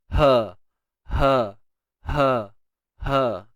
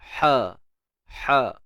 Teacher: Ha pedas ni kita kena sempitkan di bahagian tengah kerongkong kita, maka jadilah yang kita kata pedas-pedas tu kan.